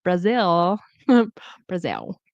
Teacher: they don't pronounce the L all the time at the end